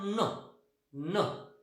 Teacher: आपली जीभ टिथरीजकडे जाते किंवा ॲल्व्ह्युलर रिजकडे जाते.